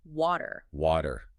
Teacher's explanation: word water water most American English speakers pronounce that middl t as a flap which sounds a lot like a quick D